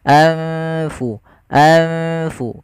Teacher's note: adanya nun sukun bertemu dengan huruf Fa yang di mana nunnya disamarkan ke huruf Fa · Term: ikhfa